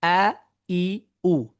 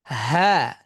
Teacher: তার কারণ হচ্ছে যে হা হামজার তুলনায় সাউন্ড কম, বাতাস বেশি তার। হামজার তুলনায় হায়ের বাতাস বেশি, এই জন্যই তার আগে মানে বাতাস বের হয়ে যায়, তারপরে তার কিছুটা আওয়াজ আসে।